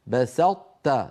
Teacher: بسطت نطبق على طاء ثم نفتح على تاء